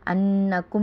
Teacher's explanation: انکم میں نون مشدد اس سے غنہ ہوگا